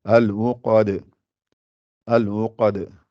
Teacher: Le rond n'est pas gonflé. Le qa est gonflé et le dal n'est pas gonflé.